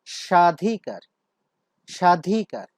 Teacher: তো শব্দের উচ্চারণটি আমরা লিখেছি, তোমরা দেখো ব্র্যাকেটের ভেতরে বানানটি হচ্ছে দন্ত স দিয়ে, কিন্তু ধ্বনিগত উচ্চারণ কিন্তু তালব্য স এর মতো পাচ্ছি, সেজন্য আমরা এখানে তালব্য স ব্যবহার করেছি।